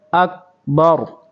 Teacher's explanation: اکبارو ہے لیکن یہ ہے وقف ہے تو اکبر